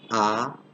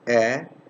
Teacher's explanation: when i'm saying ah you can see notice that it's fully open when i'm saying air it's not fully open it's half of open this is pronounced with the lips half